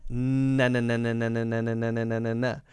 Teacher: it's the front of the tongue that's blocking, behind the teeth. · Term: N sound